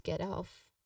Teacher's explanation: You could say it as like that in a sentence or this is where you get off for the museum. Now the pronunciation is get off again with stress on both words